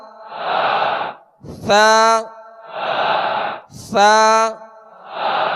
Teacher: ثا کو نرمی کے ساتھ ادا کریں گے اور ثا کا مخرج زبان کا سرا، اوپر کے سامنے والے جو دو دانت ہیں اس کے اندرونی کنارے